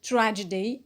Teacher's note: it's a noun stress on the first syllable